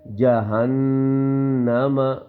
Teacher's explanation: ٹھیک ہے اس کے اوپر کیا ہوگا غنہ ہوگا. نون کی آواز کو ناک میں چھپائیں گے ایک الف یعنی 1 سیکنڈ کے برابر